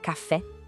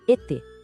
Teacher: Em todas elas, a gente ouve esse som bem claro e fechado de E.